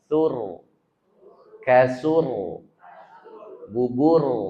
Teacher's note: Ro dibaca mati sebelumnya bunyi u tebal.